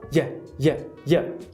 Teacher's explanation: É a palatal, a semipalatal, junto de um schwa.